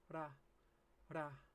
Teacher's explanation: when you make an R in Japanese, your tongue should start behind your teeth and then flick downward. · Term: Japanese R